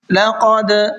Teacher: وطوری وہذا البلد الامین، ذال کو یہاں پر نرمی کے ساتھ میں پڑھنا ہے، حاضل نہیں پڑھنا ہے بلکہ وَهَذَا لَقَدْ خَلَقْنَا الْإِنسَانَ فِي أَحْسَنِ تَقْوِيمٍ۔ لقد، قاف کو پر کر کے منہ بھر کے پڑھنا ہے اور دال کے اندر قلقلہ کریں گے